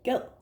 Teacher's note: it is actually with a glottal stop for the verb in Danish